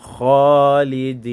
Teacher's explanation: ça sort avec la bouche gonflée qu'on appelle tafkhim. C'est comme si tu disais O au lieu de A. Khalidin. Le alif là maintenant, au lieu de dire Kha, ça ne sort plus comme A, ça sort comme O.